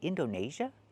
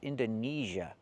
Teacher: We do not use the long A like day and say. We use the long E like green beans.